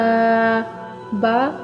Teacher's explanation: با یہ بھی ہونٹوں سے ادا ہونے والا حروف ہے